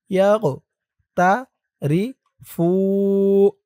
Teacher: ওয়াও জবর ওয়াউ ওয়ালিয়ার ওয়াউহু ওয়ালিয়াকতারিফু ওয়ালিয়াক ইয়া দিয়ে কফ ধরবে এই কফটা কলকলার হরফ ধাক্কা দিয়ে পড়তে হবে ইয়াক তা রি ফু ফু একালিফ টান পেশের পরে ওয়াও সাকিন